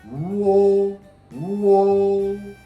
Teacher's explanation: Oo is back highest place, back highest place. O is back middle place, back middle place.